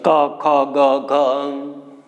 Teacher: કંઠીય તો કંઠમાંથી નીકળશે ક, ખ, ગ, ઘ.